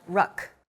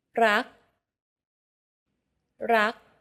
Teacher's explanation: Do you notice how air in the final K sound is not expelled? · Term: unreleased